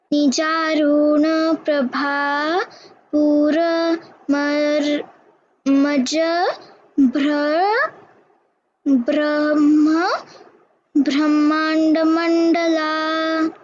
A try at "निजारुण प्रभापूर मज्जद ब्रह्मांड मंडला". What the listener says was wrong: We have to work on two things. Brahmanda, pronunciation of bra, and Nijaruna, ru to keep rasva.